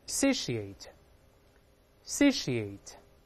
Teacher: 字母▁T▁发▁sh▁这个声音